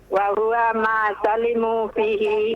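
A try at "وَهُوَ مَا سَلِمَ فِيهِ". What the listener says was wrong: Wa huwa ma salima, bukan afwan. Bukan salimu ya.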